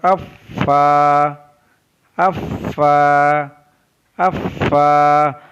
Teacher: ऊपर के दांतों के किनारे और निचले होंठ के तर हिस्से से फा अदा होता है।